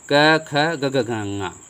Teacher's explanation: क और ख में घर्षण नहीं आता है, बाकी जो 3 हैं ये इसमें घर्षण आता है